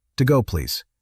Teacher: A rising tone when asking, Can I get an Americano? and a soft fall to close